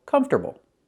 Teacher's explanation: The stress is on the first syllable.